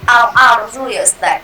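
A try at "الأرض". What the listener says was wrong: Jangan biasakan akhirnya panjang. Ya, akhirnya ada mat itu kebiasaan kita Indonesia ya.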